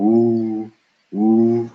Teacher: in English, this is how we make the W sound by puckering up like we're about to kiss somebody. So woo, woo. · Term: English W